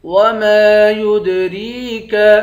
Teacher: میم کے بعد الف ہے، الف حروف مدہ ہے، ایک الف کے مقدار کھینچیں گے. یا کو دال کے ساتھ ملا کر دال پر قلقلہ کریں گے. را کو یا کے ساتھ ملا کر یا کو ایک الف کی مقدار کھینچیں گے، اس کاف کو باریک پڑھیں گے.